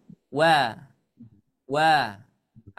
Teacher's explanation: sifatnya adalah mengumpulkan kedua bibir